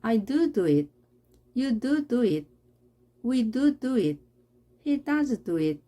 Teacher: 이때는 앞에 do에 힘을 줘서 표현합니다.